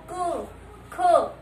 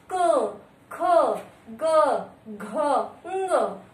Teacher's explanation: क वर्ग जो है ये इसको बोलने हमारे जो वायु है वो कंठ को टकरा के बाहर आती है। देखो बोल के देखो, क, ख, हमारा ये जो कंठ है ना इस पे रुकावट आ रही है, यानी इसको टच करके वो वायु बाहर आ रही है।